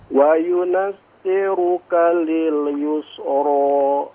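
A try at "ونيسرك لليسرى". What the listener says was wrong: Kebalik nun sama ya-nya Pak ya.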